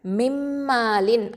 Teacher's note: அடுத்தது மின் மாலின் அப்படின்னு இருக்குன்னா இதை இந்த நூன் சாக்கினா வந்து மீமோட இணைஞ்சிருச்சு கம்ப்ளீட்டாக, மிம்மாலின் அப்படின்னு வந்துடும். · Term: இதுகாம் காமில்